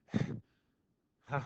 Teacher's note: the ha sound is produced by using the vocal folds. They are open in a way, but they have friction noise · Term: glottal sound